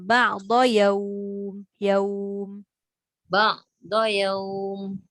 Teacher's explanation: waw tu dia tak masuk hidung. Sebab waw tu huruf huruf jauf.